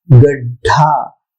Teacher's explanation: महाप्राण तो है मगर इतना भी महाप्राण नहीं है कि ढ से ढ लगाएं। गड्ढा मतलब बहुत ज्यादा उच्चारण हो गया, तो ऐसी भी गलती नहीं करना चाहिए।